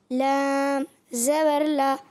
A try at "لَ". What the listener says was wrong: اچھا, لام ناک میں پہلے نہیں جائے, لام آخر میں جائے گی. لا, جب آپ لا پڑھ رہے ہیں تو ناک میں آواز نہیں جانی چاہیے. لام زبر لا.